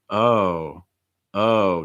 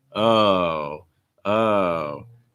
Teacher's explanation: to make it sound a little bit more disappointing what am i doing i'm lowering the intonation oh falling intonation i'm also lengthening the vowel oh oh so